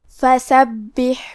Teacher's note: کلمت فسبح میں با پہ تشدید ہے تو ہمیں تشدید کو ظاہر کرنا ہے، اور کیونکہ تشدید زیر کا ہے تو ہم زیر کو بھی ظاہر کریں گے۔